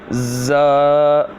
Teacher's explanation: زا جو ہے زبان کی نوک اور دونوں دانتوں کے اندرونی کنارے سے ادا ہوتا ہے